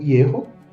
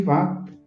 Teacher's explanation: Ierro, sílaba aberta, pretônica, com vogal longa, e Vá, sílaba tônica, aberta, com vogal longa.